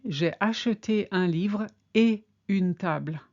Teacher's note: You never ever link et with anything, so as not to confuse it with est. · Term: no liaison